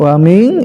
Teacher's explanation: wa min ikhfa masuk kelompok al-khaisum, harus ada dengungnya, ada rongga hidungnya, di hidung enggak usah ditahan.